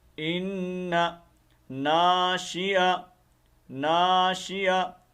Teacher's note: ان آپ کو پتہ ہے یہ حرف مشبہ بالفعل ہے اور یہ نون مشدد ہے اور اس کے اوپر ہمیشہ غنہ ہوتا ہے